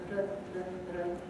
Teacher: The R in Spanish is a voiced alveolar tap